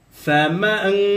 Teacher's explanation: নুন সাকিনকে গুন্না করেছি ফামান গুন্না সারা কিন্তু পড়ি নাই গুন্নার সহিত মিলিয়ে পড়েছি